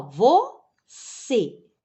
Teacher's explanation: Então, você é uma palavra oxítona, ó, porque a última sílaba é a tônica.